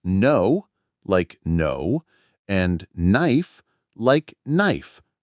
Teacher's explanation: For example, the K in words like no or knife. Many students pronounce the K sound saying cano or knife, but it's silent.